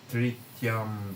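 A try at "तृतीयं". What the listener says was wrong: There should say Tritiyam, because it's a long E.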